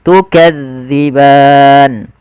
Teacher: zal ini salah satu huruf idlaq yang dia pelafalannya di ujung lidah kita menempel dengan gigi sari. Ya, maka gigi sari atas.